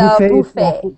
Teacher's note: however you say it, British or American, you do not say the T. So the last part of the word is like a fay.